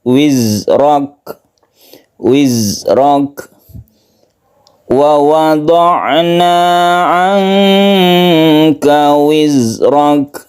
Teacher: Tapi kalau za atau zai, huruf zai ini tidak qalqalah